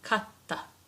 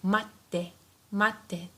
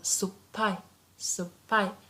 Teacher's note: we just make the consonant coming afterwards double. So if we have T, it becomes double T, katta. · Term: double consonant